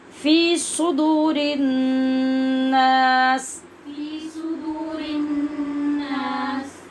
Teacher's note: صدور نہیں پڑھیں، سواد کو پر بھی کریں اور سیٹی کی آواز سے پڑھیں